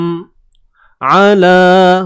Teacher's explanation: huruf ain sempitkan, tengah kerongkong